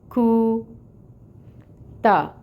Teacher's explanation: اس میں جو دمہ ہے پیش کی حرکت 1 کاؤنٹ، اور اپنے لپس کو راؤنڈ کریں گے